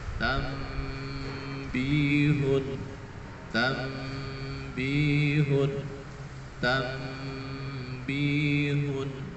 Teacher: jadi harus dibaca dengan cara mendengung